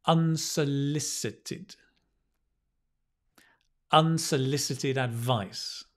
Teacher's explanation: And I'm going to put the stress on the L.